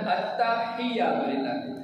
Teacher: ہا کا مخرج ہے وسط حلق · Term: ہا حلق والی